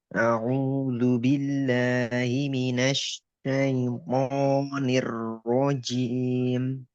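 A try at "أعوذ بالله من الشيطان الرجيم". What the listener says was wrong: Nah, itu kurang tebal. Nir antum masuknya itu nir nir.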